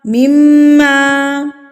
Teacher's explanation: मीम मुशद्दत पर गुना किया जाता है। यानी कि नाक में आवाज को लेके जाना है। एक हरकत के बराबर आपने उसको नाक में मीम की आवाज को रोक के रखना है। · میم مشدد پر غنہ کیا جاتا ہے، یعنی کہ ناک میں آواز کو لے کے جانا ہے. ایک حرکت کے برابر آپ نے اس کو ناک میں میم کی آواز کو روک کے رکھنا ہے.